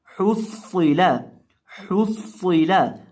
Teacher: हा को पढ़ते वक्त हम अपने होंठों को गोल करेंगे क्योंकि हा के ऊपर पेश है, और सौद को हम मोटा करके पढ़ेंगे क्योंकि ये हरूफ मुस्तालिया में से है। · एक तो हा को हमने हलक के बीच से अदा करना है · सौद को हम मोटा करके पढ़ेंगे क्योंकि ये हरूफ मुस्तालिया में से है। हरूफ मुस्तालिया को जब भी पढ़े उनको मोटा करके पढ़ते हैं।